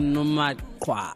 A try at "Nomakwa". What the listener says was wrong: Didn't pronounce it well. It's Nomakwa. The k should be heard. The k.